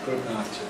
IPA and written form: ˈgʊd ˈnaɪt (good night)